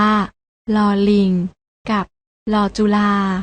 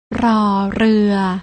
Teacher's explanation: อ่านออกเสียงโดยไม่ต้องกระดกลิ้น